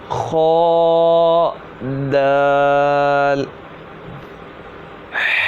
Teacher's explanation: خا جو ہے حلق کے اوپر والے حصے سے ادا ہوگا، اس کا بھی خاص خیال رکھنا ہے۔